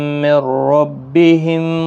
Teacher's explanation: نون ساکن کے بعد را آیا ہے، ادغام ہوگا لیکن گنہ نہیں ہوگا · باقی کسی بھی حرکت والے حرف کو کھینچنا نہیں، میم ساکن کے بعد واو آئی، اظہار شفوی ہوگا، را زیر کی وجہ سے باریک پڑھا جائے گا، ضاد حروف مستعلیہ کا حرف ہے، پر پڑھنا ہے